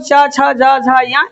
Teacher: इनका उच्चारण स्थान तालु, ये तालु से उच्चारित होते हैं